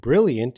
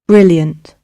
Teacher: r brilliant in american english you pronounce the r brilliant so with the word brilliant you pronounce the r in both english and american